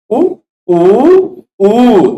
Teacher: मुर्गे की आवाज सुनी है ना किसी ने, तो वह कू कू तीनों बोलता है। पहला वाला ह्रस्व होता है, दूसरा वाला दीर्घ होता है, तीसरा वाला प्लुत। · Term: ह्रस्व दीर्घ प्लुत